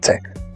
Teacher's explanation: a sílaba pretônica tem a vogal média baixa anterior